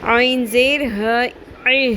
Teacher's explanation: یہاں پر آپ نے بہت خیال رکھنا ہے، عین کا مخرج الگ کلیئر ہونا چاہیے بالکل، اور ہ آخر میں ہ کی ساؤنڈ اقصی حلق یعنی کہ حلق کے سب سے نچلے والے حصے سے ادا ہوگا